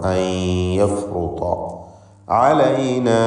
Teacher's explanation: അൻ യഫ്റുത എന്ന് പറയുമ്പോൾ സാക്കിനത്ത നൂനും ശേഷം യാവുമാണ്. ഇദ്ഗാം ബി ഗുന്ന നാഖിസ് നൽകി നൂനിനെ യാഇൽ ഭാഗികമായി ലയിപ്പിച്ച് മണിക്കണം.